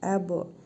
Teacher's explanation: Bə hərfinin üzərində cəzm var. Qalqalə hərfidir, vurğulu tələffüz edirik.